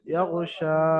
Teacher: শিনকে এক আলিফ পরিমাণ আলিফ মাদ্দার মতো টান দিয়ে পড়তে হবে, কারণ শিনের উপরে খারা জাবারটা এসেছে, সেই জন্য শিনকে এক আলিফ পরিমাণ খারা জাবারের মতো আলিফ মাদ্দার মতো টান দিয়ে পড়তে হবে।